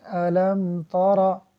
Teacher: را پر زبر ہے تو اس کو پر کر کے پڑھیں گے